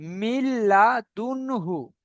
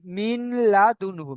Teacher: এই নুন সাকিনের পরে কিন্তু লাম এসছে এবং লামের উপরে তাসদিদ দেওয়া আছে। তাসদিদ দেওয়ার কারণে নুনটাকে বাদ দিয়ে মিমটাকে লামের সাথে ধরে পড়তে হচ্ছে। তো মিম লামজের মিল, লাম জাবার লা, মিল্লা, দাল নুন পেশ দুন, মিল্লা দুন, হা পেশ হু, মিল্লা দুন হু।